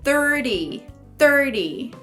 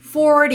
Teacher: Aqui, como a gente tem o R e o T, aí eu, ao invés de fazer o som do T, eu vou fazer só o som do R